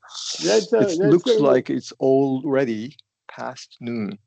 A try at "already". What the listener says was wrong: And you articulate everything fine, except for in there you get kind of that tongue gets. I mean, we're using the tongue for the L and the R, which makes when they're next to each other in either direction very, very difficult.